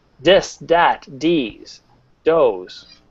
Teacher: instead of saying the th sound you'll end up saying the d sound